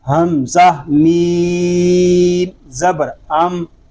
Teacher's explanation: اب یہاں بھی بعض طلباء ایسے پڑھتے ہیں حمزہ میم زبر ام، حمزہ میم زیر ام، تو یہ درست نہیں ہے۔ یاد رکھیے میم حروف کلکلہ میں سے نہیں ہے، اس میں کلکلہ نہیں کریں گے، اس کو سکون کے ساتھ ادا کریں گے